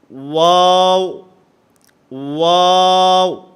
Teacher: واو جو ہے یہ دونوں ہونٹوں کے گول ہونے سے ادا ہوتا ہے. نہ تمام گول کرنے ہیں، آپس کے اندر ہونٹوں کو ملنا نہیں چاہیے.